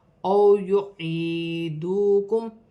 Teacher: میم ساکن میں غنہ نہیں ہوگا. او یعیدوکم واو ساکن سے پہلے زبر ہے تو واو لین بنے گی, اسے کھینچا نہیں جائے گا. یا ساکن سے پہلے زیر ہے تو یا مدہ بن رہی ہے, 1 الف کی مقدار کھینچ کر پڑھا جائے گا.